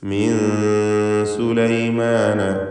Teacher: സാക്കിനത്തായ നൂനും ശേഷം സീനും ഇഖ്ഫാ ഹഖീഖി നൽകി മറച്ച് മണിച്ച് നൂനിനെ ഉച്ചരിക്കുക. മീൻ എന്ന് ക്ലിയർ ആക്കരുത്, മറിച്ച് മിൻ സുലൈമാന വ ഇന്നഹു.